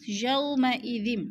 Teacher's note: یو پہ وولین ہے، لمبا بھی نہیں کرنا اور جھٹکا بھی نہیں دینا۔ یومئذ، دال دو زیر زم، آگے بار ہے، یہ چھوٹا سا میم لکھا ہوا ہے تو اس میم کو ہم نے پڑھنا ہے۔